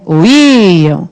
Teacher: Íon, qual é a sílaba tônica de íon? É o I outra vez